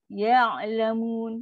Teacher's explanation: Ain ada sifat tawasud lembut. Ya'lamun. Lembut je.